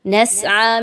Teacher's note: نسعى میں سین کی سیٹی کی آواز کو لائیں گے، آ میں دیکھیے تو کھڑا زبر آ گیا، 1 سے 2 الف کے برابر کھڑا زبر کی ادائیگی کو رکھیں گے۔